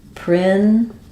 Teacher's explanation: notice how there's really not much vowel in this final syllable. We have a syllabic L there.